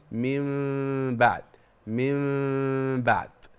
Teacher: الفرجه حضرتك ان حضرتك بتخلي فتحه صغيره جدا بين الشفتين